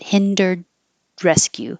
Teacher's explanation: you won't hear the D because there's a consonant R after it